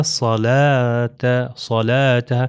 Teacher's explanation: اب یہاں پر آپ دیکھ رہے ہیں کہ صاد آیا ہے، تو صاد کا تلفظ ہم نے کیا بتایا تھا اپنے پچھلے لیول 1 کے اندر، جو ہم نے بتایا تھا کہ وہ پیچھے سے زبان جو ہے اوپر چلی جاتی ہے، موٹا ادا ہوتا ہے